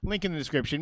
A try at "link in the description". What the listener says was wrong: It sounds like you're saying lick in the description. Lincoln? Link?